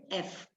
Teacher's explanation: So today we will be learning voiceless sound F, that is F. Voiceless is the vocal cord doesn't vibrate